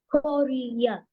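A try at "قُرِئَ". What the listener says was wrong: no Kuri'a. Yeah, so you will not say Kuriya because the ya will not be pronounced. Okay, it will be Kuri'a. Kuri'a.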